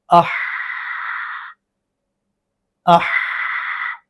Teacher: ہا میں آواز جتنا مرضی جاری رکھنا چاہیں اپنے سانس کے حساب سے تو وہاں آواز جاری رہ سکتی ہے